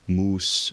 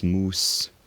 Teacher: maybe a slightly retracted s in Latin moose versus moose